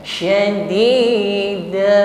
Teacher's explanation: fathah tanwin dibaca waqaf, maka dan kita baca fathah. Ya, kita panjangkan cukup satu alif saja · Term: Mad iwad